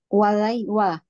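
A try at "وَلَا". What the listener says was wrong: Wa-nya panjang. Jadi wal gitu bacanya.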